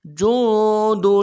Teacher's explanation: جیم کو نون کے ساتھ ملانا ہے، نون کے اوپر نون ساکن ہے، غنہ کریں گے